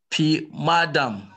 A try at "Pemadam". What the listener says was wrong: Not P, eh? P. Pemadam.